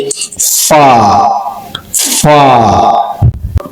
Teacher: নিচের ঠোটের পেট সামনের উপরের দুই দাতের অগ্রভাগের সাথে লাগিয়ে